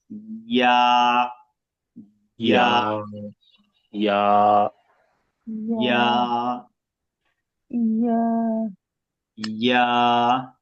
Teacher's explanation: জিহ্বার মধ্যখান উপরে তালের সঙ্গে লাগে